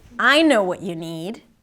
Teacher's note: See how she stretches up when she says I? And her pitch is up as well.